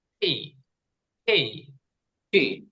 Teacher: এটা হবে একটু বাতাস বের হবে ট এবং ঠ এর মাঝখানে